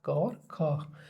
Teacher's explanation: क और ख में आप देखोगे कि तंत्रिकाओं में कोई कंपन नहीं है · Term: अघोष